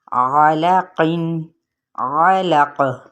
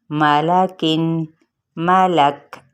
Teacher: اب قاف پہ قلقلہ ہے اور اس باریک کاف پہ کیا ہے، ہمس ہے اور اس کی آواز ایسے ہوگی، ملک۔